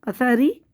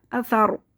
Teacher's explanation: اور را ساکن سے پہلے جب زبر ہوگا تو را کو موٹا پڑھیں گے، کیونکہ را ساکن سے پہلے جب زبر یا پیش ہوتا ہے تو موٹا پڑھتے ہیں، اور زیر ہوتا ہے تو باریک پڑھتے ہیں. یہاں پہ ری ہم نے پہلے باریک پڑھا، پھر وقفی صورت میں اس کو موٹا پڑھیں گے. اثار، اثاری، باریک پڑھا، اثار، وقفی صورت میں موٹا پڑھ لیں گے.